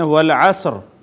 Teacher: را کے نیچے زیر ہو اور ایک پیش والے حرف پر وقف کریں ایسے کہ حرکت کا ایک تہائی حصہ پڑھا جائے، اس کو وقف بالروم کہتے ہیں۔